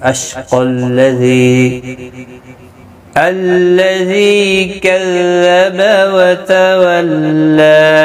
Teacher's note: ذی یا مدہ ہے، ایک الف کی مقدار کے برابر کھینچ کر پڑھیں گے · ملانے کی صورت میں قاف لام کے ساتھ ملے گا ، اشقى الذي كذب وتولى، ذی یا مدہ ہے، ایک الف